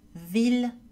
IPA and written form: vil (ville)